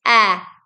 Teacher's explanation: es uno vocal porque sonido es abierto y sonoro